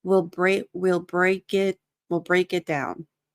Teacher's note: So the K links to the I, and then the T, it's going to be, you're going to stop it, but you have to do the tongue in the T position.